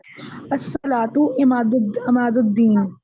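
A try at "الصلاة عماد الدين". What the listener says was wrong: Pause नहीं करना, आपने पढ़ना है इमादुद्दीनी।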